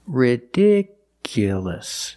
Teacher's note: The stress moved to the second syllable.